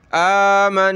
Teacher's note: نون کے اوپر تشدید آ جائے تو ہم نے وہاں غنہ کرنا ہوتا ہے۔ غنہ یعنی ناک میں آواز پیدا کریں گے، کس طرح؟ · قَالُوا آمَنُوا، قَالُوا آمَنَّا، آمَنَّا، یہ دیکھیں کلرفل ہے، یعنی نون کے اوپر تشدید آ جائے تو ہم نے وہاں غنہ کرنا ہوتا ہے۔ غنہ یعنی ناک میں آواز پیدا کریں گے